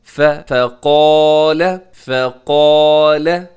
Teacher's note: فا باریک ہے، قاف موٹا ہے، ساتھ الف بھی موٹا ہے، لام باریک ہے